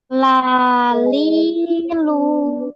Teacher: ini kan dia kita nyebutnya la berarti di ujung lidah sedangkan huruf lam itu dia di tepi lidah menyentuh bagian langit-langit bagian tepi langit-langit